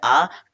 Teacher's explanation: आ कंठ से बोला जाता है